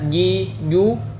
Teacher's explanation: Huruf jim, ya, ji, ju, tengah lidah harus benar-benar menempel pada langit-langit di atasnya. Sedangkan huruf shin dan ya, tengah lidah dan langit-langit di atasnya tidak begitu menempel seperti pada gambar ini.